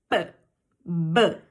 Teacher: O que isso quer dizer? Que quando você as produz, você junta o seu lábio superior com o seu lábio inferior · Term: letras bilabiais